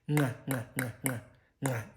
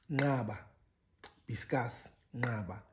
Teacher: with these nasals sort of preceding the click itself, in a sense, these are prenasalized, or it's a prenasalization process for the clicks.